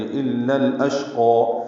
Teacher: حمزہ کو شین سے ملانا ہے، شین میں تفشی ہے، ہمس ہے، قاف پر کھڑا زبر ہے، 2 حرکات لمبا کریں گے.